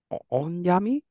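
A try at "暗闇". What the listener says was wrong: Good guess. Onyami? So this is not on like ongaku, though it does have the music sound effect here. This is the word we saw earlier with kurai and makura, which means dim or dark.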